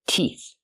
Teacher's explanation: the th makes a sound with no voice like in thank you and think